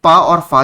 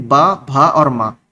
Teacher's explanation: करते हुए बाहर निकलती है तो वो अघोष कहलाते हैं जैसे प और फ जो है ये अघोष है लेकिन ब भ और म ये आपके सघोष वर्ण है